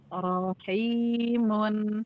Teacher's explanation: ro yang dibaca tebal itu ee pangkal lidahnya naik ya